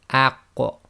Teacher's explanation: we purposely separate and make sure there's a slight echo on it